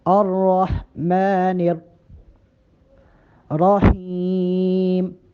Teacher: میم پہ کھڑا زبر ہے، میم کو ایک الف کے برابر کم از کم لمبا کر کے پڑھیں